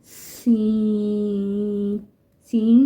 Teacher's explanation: سین میں سیٹی کی آواز پیدا ہوتی ہے۔ زبان کی نوک جب ثنایا سفلی نیچے والے دانتوں کے کنارے سے لگے اور اس کے ساتھ ثنایا علیہ اوپر والے سامنے کے دانتوں سے بھی لگے تو سین ادا کیا جاتا ہے۔